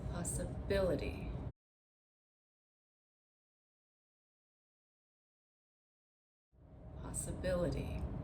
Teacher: we're going to stress the syllable right before the ity